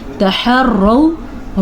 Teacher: را کو پر پڑھنا ہے اور واو لین ہے، اس کو نرمی کے ساتھ پڑھنا ہے